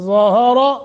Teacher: ظا اور را دونوں موٹے